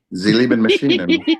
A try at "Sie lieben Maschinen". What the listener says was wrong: You just have to turn that S in Maschinen into a Sh. Sie lieben Maschinen.